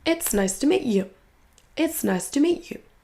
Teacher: Et le you va être réduit souvent en y.